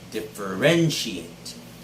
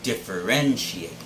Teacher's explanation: But it's differentiate. The stress should be on the third syllable, ren.